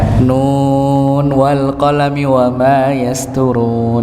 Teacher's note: Maka dibaca idhar di situ nunnya, tidak dibaca gunnah. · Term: idhar riwayah